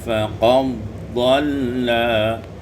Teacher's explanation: idghamul dal fi dhad diidghamkan dal pada dhad menjadi faqad dhalla.